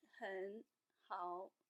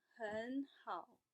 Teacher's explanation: the first character will be switched to the second tone